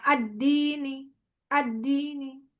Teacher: menurunkan volume suara ketika wakaf pada huruf domah atau kasrah di mana sebagian suaranya hilang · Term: rum